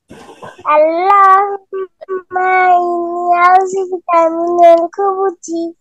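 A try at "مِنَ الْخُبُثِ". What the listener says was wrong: এর লাস্টে সা, তা সা না, মিনাল খুবুসি।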